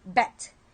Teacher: at the end of the bet, the vocal cord stops vibrating so that the sound is result only of the placement of the tongue behind the teeth and the flow of the air.